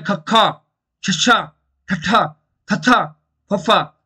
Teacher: ਦੇਖੋ ਆਵਾਜ਼ ਕਿੰਨੀ ਫਾਸਟ ਬਾਹਰ ਆ ਰਹੀ ਹੈ, ਇਹਨੂੰ ਕਹਿ ਦਿੰਦੇ ਆ ਮਾਂ ਪ੍ਰਾਣ